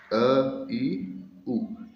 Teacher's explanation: ये ह्रस्व स्वर हैं। क्योंकि इनके उच्चारण में दीर्घ स्वरों से कम समय लगता है।